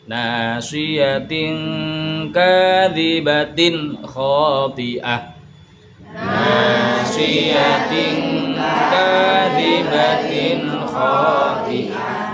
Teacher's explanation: sing nasiyatin niku diwaca samar mergi ngajengi niku kaf kepanggih kali kaf berarti tasik ikhfa tasik samar mendengung